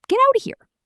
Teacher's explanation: 4 words melt into one long connected sound. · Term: linking